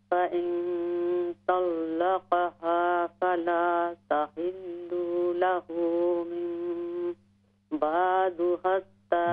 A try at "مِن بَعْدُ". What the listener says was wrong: من بعد یہ عین ہے من بعد